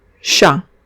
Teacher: No pronunciamos la T en chat, no pronunciamos la T porque es la consonante final.